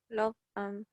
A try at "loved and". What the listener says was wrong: Cuidado, es una D. Loved and.